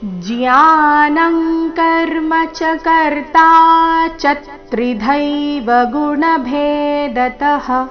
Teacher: ಆಘಾತ ಬರಬೇಕು ಯಾಕಂದ್ರೆ ಎರಡನೇ ಚರಣ ತ್ರಿದೈವ ತ್ರಿ ಸಂಯುಕ್ತ ಅಕ್ಷರದೊಂದಿಗೆ ಪ್ರಾರಂಭವಾದ ಕಾರಣ ಮೊದಲನೇ ಚರಣದ ಕೊನೆಯ ಅಕ್ಷರ ಚ ಮೇಲೆ ಆಘಾತ ಬರಬೇಕು